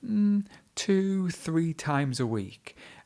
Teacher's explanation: Because she's extended the word two, it is replacing the word or.